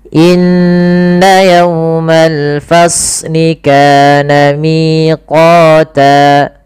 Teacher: Inna yawmal fasli kana, kana mad tabi'i panjangkan 2 harakat. Miqata, miqata kita tahan.